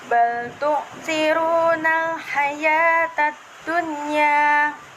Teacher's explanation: Dan nomor 20 itu termasuk pada hukum tajwid alif lam qamariyah, karena huruf alif lam bertemu dengan huruf ha dan dibaca secara jelas